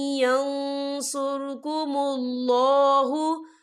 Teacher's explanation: نون ساکن کے بعد جو ہے یا آ رہا ہے، اور یا جو ہے حروف ملون میں سے ہے تو یہاں پر ادغام ہوگا، تو ہم اسے تھوڑا سا غنے کے ساتھ پڑھیں گے